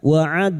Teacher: huruf dal yang mati asli di kalimat qalqalah sugro. Jangan lupa dipantulkan.